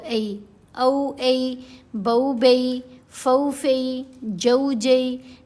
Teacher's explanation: لین حروف کی آواز زبر زیر پیش جیسی نہیں رہتی بلکہ درمیانی سی آواز بن جاتی ہے · اب آواز تھوڑی سی ٹلٹ ہو جائے گی، ٹیڑھی ہو جائے گی، حمزہ زبر آ نہیں پڑھا جائے گا بلکہ حمزہ زبر واو ساکن او آواز بنے گی۔ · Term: واو لین